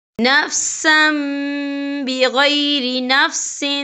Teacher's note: یا دیکھیں نفسم سم، سین کے پر تنوین ہے، تنوین کے بعد جو ہے با آ رہا ہے، تو یہاں پر انقلاب ہوگا، یعنی تبدیلی ہوگی، تو ہم یہاں میم کا تلفظ کریں گے اور ہم یہاں غنہ بھی کریں گے